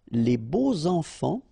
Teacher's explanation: even if you've got this X, well, phonetically it will be like Z, so like if it would be an S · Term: liaison